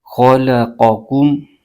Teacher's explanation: خا اور قاف یہ دونوں حروف متعالیہ میں سے ہیں، ان دونوں حرفوں کو پر یعنی موٹا کر کے پڑھیں گے، اور بیچ میں لام باریک حرف ہے۔